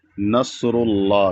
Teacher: लफ्ज़ अल्लाह को मोटा पढ़ा जाएगा क्योंकि लफ्ज़ अल्लाह से पहले रा पर पेश है और कायदा है कि लफ्ज़ अल्लाह से पहले जब रा पर · یہاں پر صاد ہے اور صاد ساکن ہے، تو یہاں پر اس کو موٹا پڑھا جائے گا کیونکہ صاد موٹا پڑھا جاتا ہے۔